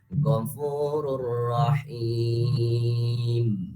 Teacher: Ada di sini contoh yang kedua yaitu tanwin menghadapi ro, yang mana ro ini termasuk kepada idgham bila gunah, ya otomatis membacanya masuk doang tapi tidak didengungkan.